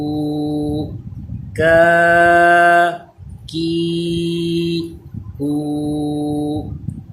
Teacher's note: زبان کی جڑ اور تالو کے سخت حصے سے یہ ادا ہوتا ہے۔ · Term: کاف